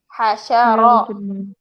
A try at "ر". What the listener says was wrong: را نہیں رو ہاشا